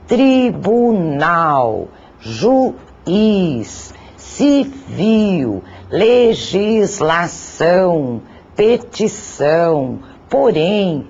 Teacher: Desse modo, de acordo com a posição da sílaba tônica, as palavras podem ser classificadas na nossa língua em oxítonas, quando a sílaba tônica recai na última sílaba